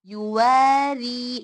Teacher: light मतलब flat mouth से, हमारी टंग एकदम फ्लैट होनी चाहिए, ऊपर तालू को नहीं चिपकनी चाहिए